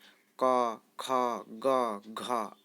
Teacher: अ आ कवर्ग ह तथा विसर्ग का उच्चारण स्थान कंठ है, अतः ये कंठ्य वर्ण कहे जाते हैं। कवर्ग में क ख ग घ आते हैं।